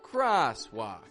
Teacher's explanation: one of them is rising in the pitch cross the other is kind of dropping in the pitch walk cross walk so it's the same sound but with different levels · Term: different levels of pitch